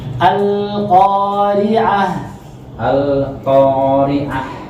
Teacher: Jangan sampai putus antara lam sama qafnya.